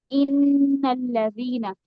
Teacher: नून पे आवाज मैंने क्या की, नाक में ले जाकर आवाज को ठहराया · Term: नून मुशद्दद